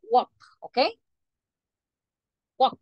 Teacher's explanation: Kam you don't say w you pronounce it walk okay walk the letter L is silent you don't pronounce letter L